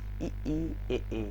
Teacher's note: अग्र में इनको बोलते समय जीभ जो है वो आगे का हिस्सा प्रयोग होता है